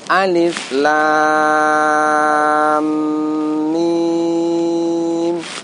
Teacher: Lamnya kita baca 3 alif atau 6 harokat dan diidghamkan ke huruf mim. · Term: mad lazim harfi musaqqal